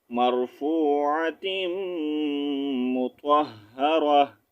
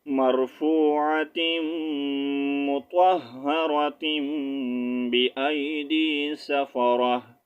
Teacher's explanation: اور اگر وقف کریں گے تو پھر آپ نے اس کا ساؤنڈ ہاں میں چینج کر دینا ہے اور اگر ملا کر پڑھنا چاہیں گے تو پھر آپ نے اس کو تیم پڑھنا ہے